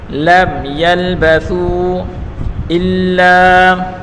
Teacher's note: حروف مدہ کے بعد حمزہ آ رہا ہے تو اس یہاں مد کریں گے